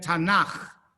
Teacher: the K from Ketuvim, which turns into a Ch sound when it comes at the end of a word